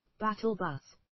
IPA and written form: ˈbætəlˌbʌs (battlebus)